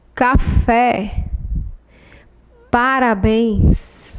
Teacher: é oxítona a sílaba mais forte a última